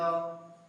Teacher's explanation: बहुत कम वायु मुंह से निकलती है, हवा कम निकलती है, इसलिए इसे अल्प प्राण कहते हैं।